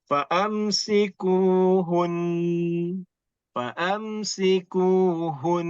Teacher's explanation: Itu nun sudah ada sifat dengungnya sendiri bila kita sukun. Tapi oleh kerana ada syaddah, kita kena lama sedikit. Tambah lagi 1 harakat. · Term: nun musyaddadah